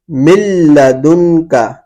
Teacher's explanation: من لدنک کے اندر نون ساکن ہے، نون ساکن کے بعد حروف یرملون میں سے لام آ رہا ہے تو یہاں پر ادغام ہوگا لیکن ادغام کے ساتھ غنہ نہیں کریں گے